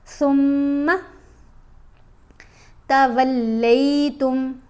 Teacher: मीम के ऊपर हमने गुना करना है लेकिन मीम को लंबा नहीं करना